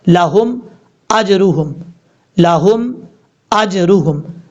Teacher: हमजा के बाद जो जीम है, ये जीम हरूफ कलकला में से है, साकिन है, तो यहाँ पर कलकला करेंगे, لیکن قلقلہ کرتے ہوئے ایک چیز کا آپ نے خاص خیال رکھنا ہے، جیم کے اوپر زبر نہیں پڑھنا. یعنی اگر آپ پڑھیں گے آجاروہم تو یہ غلط ہو جائے گا.